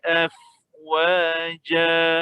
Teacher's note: kita gantikan tanwin ini pada satu baris di atas dan kita baca 2 harakat. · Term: Mad gantian